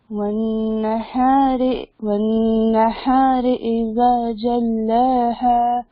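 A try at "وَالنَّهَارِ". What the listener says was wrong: والنہار نہیں بولیں گے, والنہاری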